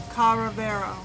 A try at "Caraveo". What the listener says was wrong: No R. putting an R in between. Say cara. Beo. Caraveo.